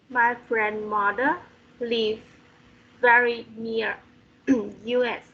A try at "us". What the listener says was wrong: Near us. Listen, when it's capital letters, it's US. When it's not, it's us.